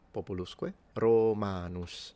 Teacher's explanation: Both the O and the A are long.